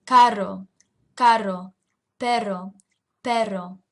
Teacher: your tongue is coming up and vibrating uh against the region right behind your front teeth. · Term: rolled R